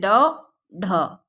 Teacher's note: मूर्धा बताया था ना, मुंह के भीतर की छत का अगला भाग। तो मूर्धा का स्पर्श करें, फिर झटके के साथ नीचे को आए। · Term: उत्क्षिप्त